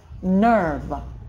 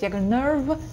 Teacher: ER под ударением дают странный звук «э», nerve. Потренируйтесь, если плохо получается, как будто «э», nerve, nerve, достаточно говорить.